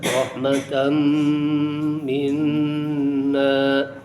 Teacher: Azaqnahu rahmatan, tanwin bertemu mim dimasukkan kepada huruf mim. Idgham, namanya idgham dengan menggunakan guna, dengan disertai guna. Rahmatan minna, ada dua kali dengung.